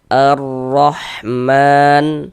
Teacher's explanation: Ah, mau itu dia tanda baca fathah atau fathatain, tanda baca dommah ya, harakat domah atau harakat dommatain, huruf ronnya itu dibaca tebal, dibaca tabkhim begitu sehingga pangkal lidah kita naik terangkat ke atas. E ketika kita mengucapkannya, tebalkan huruf rnya arrahman.